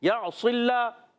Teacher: عین خوب ظاہر کریں گے حلق کے درمیان والے حصے سے